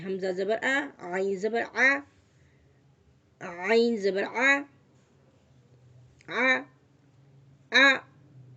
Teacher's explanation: हमज़ा बिल्कुल दरमियान से निकल रहा है, खुले मुंह के साथ, बिल्कुल स्माइली फेस बनाए।